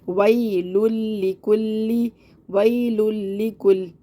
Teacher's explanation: بھی ادغام بلا غنہ کا قاعدہ ہو رہا ہے، یعنی کہ ہم تنوین کو لام سے ملائیں گے لیکن غنہ نہیں کریں گے، بغیر غنہ کے ملائیں گے